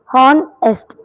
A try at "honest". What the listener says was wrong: It's not honest, it is honest. H is silent. H is always silent in the word honest. he's an honest man. We always say he's an honest man. yeah, honest has 2 syllables. Honest.